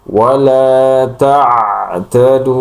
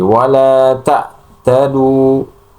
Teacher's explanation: ketika mengucapkan huruf ain, maka makhrajnya itu keluar dari pertengahan tenggorokan.